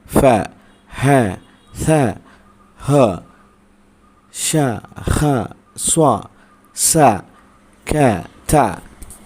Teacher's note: മഹ്റജിൽ ഊന്നൽ ദുർബലമായതിനാൽ ഉച്ചാരണത്തോടൊപ്പം ശ്വാസം പുറത്തു പോകുന്നു എന്നുള്ളതാണ് ഫ ഹ ഹ ഹ ഷ ഹ സ്വ സ ക എന്ന്